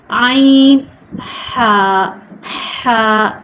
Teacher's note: یہ حلق کے درمیان والے حصے سے ادا ہوتا ہے۔ عین نکال، آپ بھی پریکٹس کریں، عین، ٹھیک ہے۔